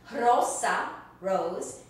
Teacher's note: you hear that the rolling sound at the beginning